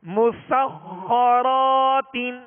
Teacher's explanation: میم سین کو باریک پڑھنا ہے, سین میں سیٹی کی آواز پیدا ہوگی اور خا حروف مستعلیہ میں سے لہذا پر یعنی موٹا کریں گے اور خا پر تشدید ہے لہذا دوہرا پڑھیں گے, دو مرتبہ پڑھیں گے. را کو پر کریں گے, را پر زبر ہے, را کے آگے الف مدہ ہے, ایک الف کی مقدار میں کھینچ کر ادا کریں گے.